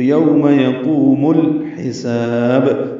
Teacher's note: سین کو صفیر کی آواز سے ادا کرتے ہوئے لمبا کریں گے، یہ پتلی سیٹی کی آواز ہوگی · میم کو الحساب کے لام سے ملا دینا ہے